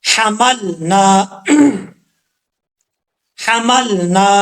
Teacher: ہا کو پڑھتے وقت ہا بریک ساؤنڈ کے ساتھ پڑھیں گے، کیونکہ جس حلق سے یہ ہا ادا ہوتا ہے اس حلق کا تعلق منہ کی طرف ہے، سینے کی طرف نہیں ہے۔ تو جب تک یہ والی آواز نہیں نکلے گی، یہ آواز، اس وقت تک یہ صحیح طریقے سے نہیں پڑھا جائے گا۔